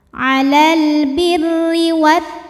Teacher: Karena alif lam menghadapi huruf syamsiyah yaitu huruf ta, maka alif lam tidak dibaca atau dimasukkan. Disebut dengan idgham syamsi.